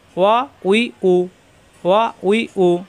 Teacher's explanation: ওয়া দুই ঠোঁট থেকে উচ্চারণ, দুই ঠোঁট মিলবে না, মুখটা একটু গোল হবে